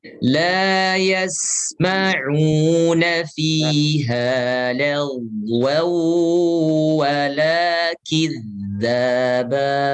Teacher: Itu ghain itu alirkan, jangan diputus suaranya.